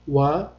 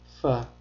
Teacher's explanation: vav harfini talaffuz qilishda lablarimiz bir-biriga tegadi. Fa harfini talaffuz qilishda esa tepa tishimiz pastki labimizga tegadi.